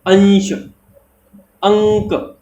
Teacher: हमारी जो नाक है उसका उपयोग ज्यादा हो रहा है और मुंह से कम · अनुस्वार जब हम उच्चारण करें तो सांस जो है हमारी वो नाक से अधिक आए और मुंह से कम आए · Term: नासिक वर्ण